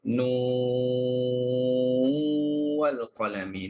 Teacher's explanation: apa kita sebut nun tu panjangkan enam harakat. Nu bila cukup enam nu kita tekan pada wau ya. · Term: idgham